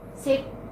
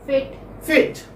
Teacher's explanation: centralized front unrounded vowel between close and half close